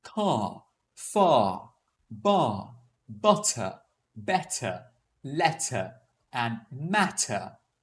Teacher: All of those words ended with an R sound. Hence, I didn't pronounce the R sound.